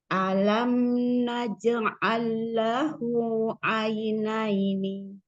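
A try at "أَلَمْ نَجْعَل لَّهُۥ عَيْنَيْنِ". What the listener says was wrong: Lahu langsung ya. Buka lagi ainnya.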